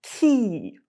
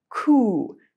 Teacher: /i/ is more towards the middle of your mouth and /u/ is further back. It's a little bit easier, a little bit more efficient to have your tongue already in position to say the vowel.